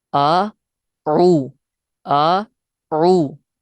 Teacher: हमजा की आवाज अलहदा निकालनी है। आ, फिर आइन, आइन वाओ पेश ऊ।